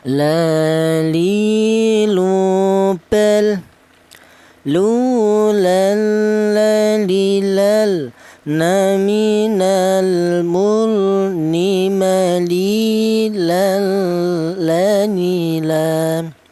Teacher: Huruf lam ini keluarnya huruf berasal dari ujung lidah menyentuh langit-langit mulut.